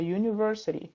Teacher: o som do a vai juntar com o som do u, vai ficar university. Se fosse o artigo indefinido em, ia ficar em university, ia soar estranho o som em inglês.